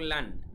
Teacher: দুই জবর যদি একসাথে থাকে, এর উচ্চারণটা হবে আন, তার মানে লাস্টে একটা ন যোগ হবে। তার মানে প্রত্যেকটা তানউইনের কাজ হচ্ছে, দুই জবর, দুই জের, দুই পেশের কাজ হচ্ছে লাস্টে একটা ন যোগ করা বা নুন সাকিন যোগ করা বলতে পারেন।